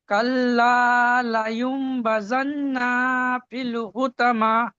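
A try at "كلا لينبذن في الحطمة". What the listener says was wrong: যেখানে টান নেই সেখানে টান হয়ে গেছে। কাল্লা, টান আছে একাধিক, ঠিক আছে। লায়ুম, এখানে নুন সাকিনের পরে মিম এসছে, এখানে কি কায়দা? কায়দা খেয়াল করেন। নুন সাকিনের পরে বা এসছে, নুন সাকিনের পরে বা এসছে, তাই নুন সাকিনকে মিম দিয়ে পরিবর্তন করে পড়তে হবে ইকলাবের কায়দা।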